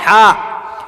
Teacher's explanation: وسط حلق، حلق وسط حلق، حلق کے بیچ سے ہا نکلتا